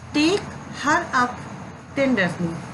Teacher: in this major each foot has 3 syllables, of which the first one is ascendant and other 2 are unascendant, or stress syllables followed by 2 unstressed syllables · इसमें जो टेक यानी stress syllables, हर unstressed, अप unstressed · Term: डेक्टैलिक